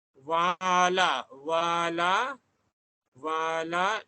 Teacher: penggunaan bunyi separuh vokal, dua bibir